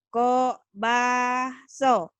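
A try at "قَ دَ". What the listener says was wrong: Ko, bado. Bukan ko paso. Ko, bado.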